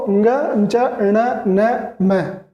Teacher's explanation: इनमें हवा मुंह के साथ साथ नाक से भी निकलती है, इसीलिए इन्हें नासिक कहा गया है।